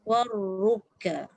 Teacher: Di permulaan war tu tak boleh war sikit je. Getaran tu bermula apabila kita menyebut ra. Lepas tu dah tak ada getar dah. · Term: takrir